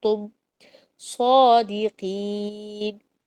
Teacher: اخفا کیا کہتے ہیں کہ درمیان کی آواز آ رہی ہے، غنہ ہو رہا ہے، دو الف کے برابر لمبا کرنا ہے